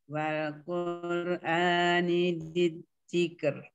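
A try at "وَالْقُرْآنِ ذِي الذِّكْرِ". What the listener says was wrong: Bukan jijik. zikr keluar lidahnya. Zikr keluar. Udah keluar lidahnya belum? Zikr. Zikr. Mana lidahnya? Keluarin. Zi. Zi. Masih sembunyi. Keluarin.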